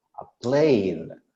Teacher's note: you're not pronouncing the D sound in the end.